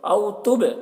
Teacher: با میں قلقلہ ہوگا، با حروف قلقلہ میں سے ہے اور اس کے اوپر جزم ہے